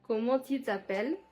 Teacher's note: It is more syllable based, less nasal. · The R is not guttural. The R is more from the tip of the tongue, like Spanish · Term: African French